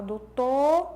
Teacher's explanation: ele fez a supressão do fonema final dessa palavra